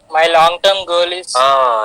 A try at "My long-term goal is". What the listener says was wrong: Yes, it is goal, not girl. pronunciation. Be careful with the pronunciation. Long term girl, short term girl. It is short term goal, long term goal, goal.